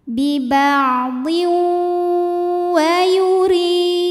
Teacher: hukum idgam bhunah karena ada tanwin kasrah menghadapi huruf wau maka tanwinnya dileburkan atau dimasukkan ke wau disertai bunyi dengung